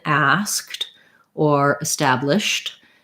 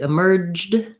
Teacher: So when I'm adding ED to something that's voiceless, like in asked or established, establish that SH sound is voiceless. So my ED is going to say T. When I'm adding it to emerged, that's voiced, and it's going to say the D sound. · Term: voiceless T sound